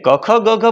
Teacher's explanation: ક ખ ગ ખ બોલવા હોય તો તમારે કંઠથી જ બોલવા પડે